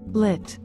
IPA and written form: lɪt (Lit)